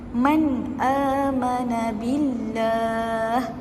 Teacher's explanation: Cara bacaannya adalah dengan kita menzahirkan sebutan nun. Jadi nun di sini kita perlu zahirkan dia ataupun kita perlu jelaskan dia. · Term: izhar